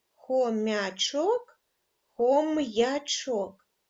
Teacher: ви почули що звук м вимовляється твердо А я позначає два звуки й а